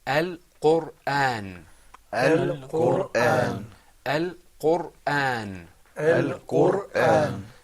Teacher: the ra or the R sound in Al-Qur'an is full-mouthed. The reason is a bit technical, and that is that there's a sukoon on the ra, which you can see, and there's a dhamma before it.